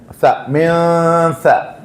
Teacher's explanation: നാവിന്റെ അഗ്രം മുകളിലത്തെ മുൻപല്ലിന്റെ ചാരത്ത് സ, അതായത് ഇതിൻ്റെ ഉള്ളിൽ നിന്ന് കാറ്റ് പുറത്തേക്ക് വരണം.